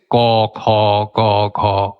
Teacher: ওই ভেলাম যাকে বলেছি ওপরের কোমল তালু। ওই কোমল তালুতে জীবের পেছন দিকটা চেপে ধরে বাধাটা দেয়া হয়। এটা দ্বিতীয় বাধাস্থান ভেতর দিক থেকে আসতে গেলে এটা হচ্ছে ক, খ, ক, খ ইত্যাদি। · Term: গাটারাল কন্ঠধ্বনি